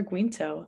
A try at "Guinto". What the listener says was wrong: Yeah, it's silent. You actually, so Ginto.